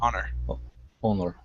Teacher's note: this is one of the words where we do not pronounce the H.